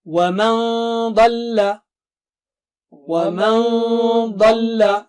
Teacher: Dad is very thick and high, so Noon Sakina also will be very thick and high.